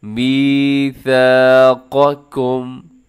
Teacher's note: जो दूसरा काफ है उसको अपने बारीक करना है